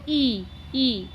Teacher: ई का उच्चारण करके देखो, कोई सी भी ई ले लो और उनका उच्चारण करके देखो, ई, मुंह पूरा नहीं खुलता, लगभग बंद सा ही रहता है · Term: संव्रत